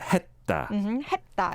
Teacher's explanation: when it comes as a 받침, then you don't really pronounce it as the S sound, but the D or T sound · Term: closing 받침